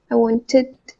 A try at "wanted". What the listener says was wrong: that last "d" you're kind of making a little more like "wantit," like a "t" again. It's wanted.